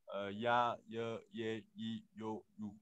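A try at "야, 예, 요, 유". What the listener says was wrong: Wow, so fast. All right, very good.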